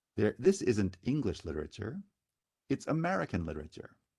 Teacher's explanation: the word American is stressed on the second syllable, so the accent lands on mare.